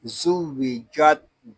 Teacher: جیم زبان اور تالو کے درمیان والے حصے سے ادا ہوگا۔ جب ہم جیم کو ادا کریں گے تو آواز منہ میں پھیل جائے گی۔